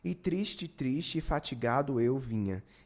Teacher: quando a gente ler a gente consegue captar que isso virou uma coisa só três vogais viraram uma coisa só porque duas delas são fracas